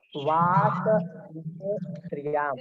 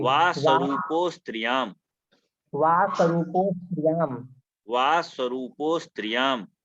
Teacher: पहले आ नहीं बोल रहे थे, अब आ बोल रहे हैं। गलत है ना, पूर्व रूप हो गया तो ओ के समान उच्चारण होगा।